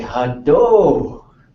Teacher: In the interior, a lot of speakers will say hado. That's how they would say that, and it ends with that O sound.